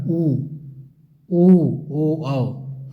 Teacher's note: ये वृत्त आकार में खुलते हैं ओंठ से। उदाहरण उ, ओ, मतलब ओंठ से खुलेंगे, वृत्ताकार गोलाकार में होगा। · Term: वृत्ताकार स्वर